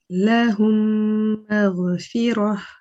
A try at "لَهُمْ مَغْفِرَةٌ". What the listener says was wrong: Yes, the only thing I want you to be careful is, with the la, you don't want to make it too long and say lahum. It's just lahum, lahum, one count.